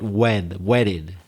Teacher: Can you hear that my T's pronounced in a much different way in American English? Not wet, but wedded. It almost sounds like a D.